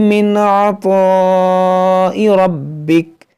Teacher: عین ہے، اس کو وسط حلق سے ادا کریں گے، یہاں تو حروف مشتعلیہ ہے، اس کو موٹا کریں گے۔